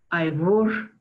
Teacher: In Arusha Ma, we find ivor with a bilabial fricative there